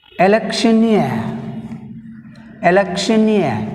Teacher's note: In electioneer word we have stress on last syllable near.